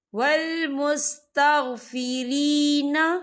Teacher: یہاں پہ یا مدہ ہو رہا ہے، یا ساکن سے پہلے زیر ہے، تو ہم اسے 2 یا 3 حرکت کے برابر کھینچے پڑھیں گے